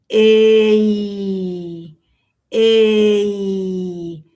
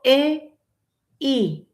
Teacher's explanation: no digo e i, sino que hago un mismo sonido